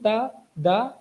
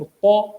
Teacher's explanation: تا دا یہ دونوں باریک آوازیں ہیں اور قا یہ موٹی آواز ہے